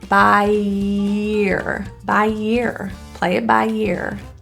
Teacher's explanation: As we link by and ear, we have two vowels, and the ending vowel is a very E position. So think of it like a Y sound, yee. So instead of by ear with a pause between, think of there being a y in the middle and adding it to year.